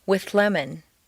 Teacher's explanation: see how the TH moves back and the L moves forward to meet in a new middle position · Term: composite sound